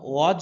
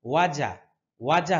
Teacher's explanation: এখানে জিমের মধ্যে কলকলা হবে না যেহেতু এখানে জবর আছে কলকলা হয় কখন যখন কলকলার হরফের হরফ গুলোর উপরে জজম থাকে